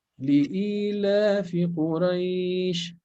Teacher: Not li-ilafi. It's not only kasra, but it's a long e here